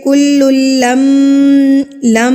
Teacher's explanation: میم کی آواز کو ہم نے ناک میں روک کے رکھا ایک حرکت کے برابر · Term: میم مشدد